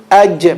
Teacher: The middle of the tongue touching the top of the palate. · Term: jeem